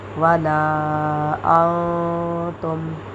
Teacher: آگے میم ساکن کے بعد پھر حروف ہلکی میں سے آئین آ رہا ہے تو یہاں ہم اظہار شفوی کریں گے، یعنی کہ بغیر غنہ کرنے کے پڑھیں گے